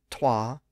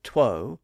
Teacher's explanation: It was originally twa, T-W-A. The vowel shifted from twa to two, and that put the W sound in between the consonant T on one side and the rounded O on the other side.